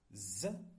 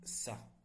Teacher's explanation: You probably felt more vibration with the Z sound rather than the Sa one.